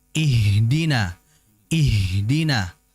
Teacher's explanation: H ini keluar dari tenggorokan bagian paling bawah atau bahasanya aqsal halq